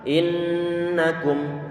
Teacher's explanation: Jadi innakum di sini nih, kalau satu n saja, satu nun saja nanti ada suara gunnah. Apalagi kalau misalnya sampai ada dua n ataupun nun yang digandakan dengan wujudnya ada tasydid di sini.